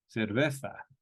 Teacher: in Spain the Z is more of a th sound as in cerveza